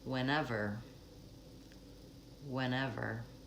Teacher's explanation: let's move from bilabial to labial dental